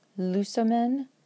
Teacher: First person plural has a short last syllable, so we go one two three, and the acute goes on the third to last.